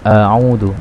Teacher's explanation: huruf hamzah ini bersumber dari pangkal tenggorokan. Jadi suara a ini bersumber dari pangkal tenggorokan.